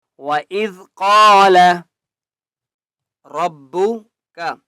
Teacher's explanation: قاف کو ایک الف کی مقدار کھینچ کر پڑھیں گے اور قاف کو موٹا کریں گے